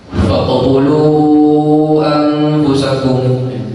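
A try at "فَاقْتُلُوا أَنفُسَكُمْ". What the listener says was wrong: Faqtulu anfusakum. Faqtulu. Tidak pendek tapi harus panjang. Faqtulu harakat. Kalau lanjut faqtulu anfusakum.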